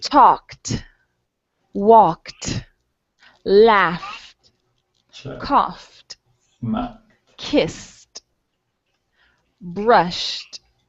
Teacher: You're going to pronounce the ending like a T.